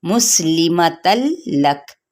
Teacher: वक्फ करते हुए लक की साउंड निकालेंगे, यानी हम्स होगा